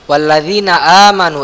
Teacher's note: ini mad badal, a ini panjang ya karena ada hamzah ada alifnya